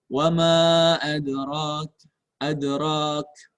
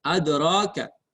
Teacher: Roknya 2 harokat karena ada mad.